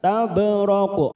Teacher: ada huruf ba sukun qala sugro, kita pantulkan